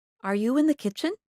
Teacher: make your voice go up at the end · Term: rising intonation